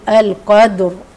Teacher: هسكن تبقى ساكن واللي قبلها ساكن ابص اشوف الحرف اللي قبليه هنا القاف مالها مفتوحه يبقى انا هعمل ايه في الرا هفخمها